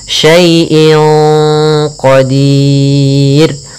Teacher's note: Kemudian inqa ada kasrotain atau kita namakan dengan tanwin an in un bertemu dengan qaf, maka kita namakan dengan ikhfa. Cara membacanya samarkan kepada qaf, dan qaf termasuk huruf tebal, maka ikhfanya agak ditebalkan.